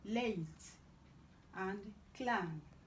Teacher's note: This is alveolar lateral, as in late and clan.